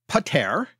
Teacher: the first syllable was unstressed, and the stress falls on the second syllable there.